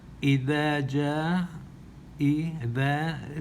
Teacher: the dal, put your tongue between your teeth